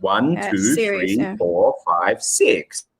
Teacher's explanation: So the counting paradigm is basically, if you've got a series of things, you will say everything with a rising tone except for the last one with falling.